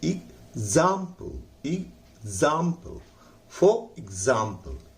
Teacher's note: जाम पर हम जोर लगाएंगे तो हो जाएगा एग्जाम्पल, एग्जाम्पल, फॉर एग्जाम्पल